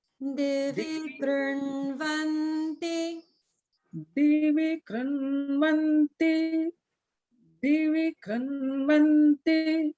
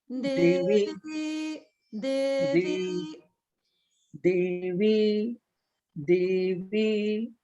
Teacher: In the Divi, the Di is lower swara.